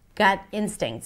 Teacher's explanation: So gut instincts is a phrase that you want to put together. Gut instincts, stress on instincts.